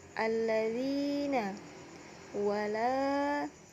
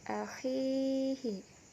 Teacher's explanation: tajwidnya adalah mad tabi'i, dibaca panjang satu alif atau dua harakat. Huruf mad tabi'i yakni alif sebelumnya berbaris fathah, waw sukun sebelumnya berbaris dhammah, ya sukun sebelumnya berbaris kasrah.